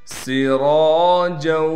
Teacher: را کے بعد الف ہونے کی وجہ سے را کو کھینچیں گے بھی